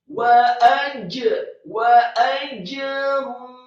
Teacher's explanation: Kemudian setelahnya ada huruf jim, huruf ja yang sukun dibaca tafkhim tebal dan diqalqalahkan